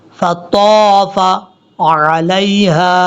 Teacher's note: طا حروف مستعلیٰ میں سے ہے، پر پڑھا جائے گا